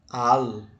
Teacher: Qual é a sílaba tônica da palavra alma? Al, ou seja, a sílaba tônica é a penúltima. Por isso, nós vamos chamá-la não de palavra aguda, mas uma palavra grave.